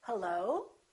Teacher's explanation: Or I can make the rising intonation, and when I answer the phone, I can say hello. So the pitch goes up.